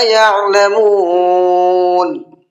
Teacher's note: عین کو حلق سے نکال کر کے پڑھنا ہے